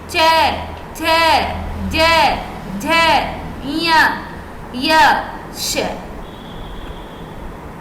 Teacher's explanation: जो हमारी जीभ है वो अंदर की साइड में दांतों से थोड़ी सी ऊपर टच हो रही है। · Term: तालु